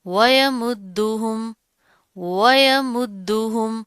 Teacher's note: دال کے اوپر پھر تشدید آ رہی ہے، مضبوطی سے جما کر پڑھیں گے